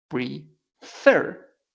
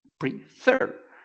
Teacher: So in this case, the pronunciation is prefer. The accent, the stress, is in the last syllable.